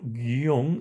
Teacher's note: la vocal i es una vocal cerrada átona y la vocal o es una vocal abierta, tónica y además la palabra se forma de una sola sílaba